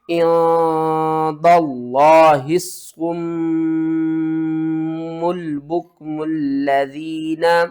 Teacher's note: یہاں پر دیکھیں ہم نے ہا کو صاد کے ساتھ ملانا ہے اور پھر اس صاد کو میم کے ساتھ ملانا ہے، میم مشدد کے اوپر غنہ کریں گے